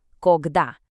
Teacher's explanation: This word has 2 syllables, and you're going to want to put the stress on that second part.